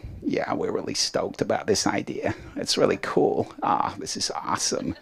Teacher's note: There is one lower register than the chest. It's called vocal fry.